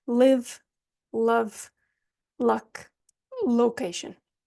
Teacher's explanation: the tip of the tongue is going to touch the back of the top teeth and drop down so it's a tap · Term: light L